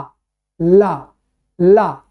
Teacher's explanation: जब अंदर से हवा निकलती है तो हवा कहां जाती हवा अगल बगल से निकलती है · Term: पार्श्विक